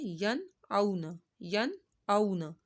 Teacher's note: نون ساکن کے بعد حمزہ حرف حلقی میں سے آ رہا ہے تو یہاں پر اظہار ہو رہا ہے، یہاں پر ہم نے ناک میں آواز نہیں لے کر جانی